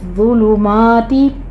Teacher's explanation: ज़ा के ऊपर तशदीद है, सख्ती करेंगे लेकिन सीटी की आवाज़ नहीं आनी चाहिए, आपने ज़ा को नरमी से साइलेंट आवाज़ के साथ पढ़ना है।